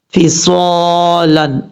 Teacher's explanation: اب اس کے بعد ہے فصالن، فا زیر فی، صاد الف زبر صا، صاد فل موت پڑھا جائے گا کیونکہ حروف مستعلیہ میں سے ہے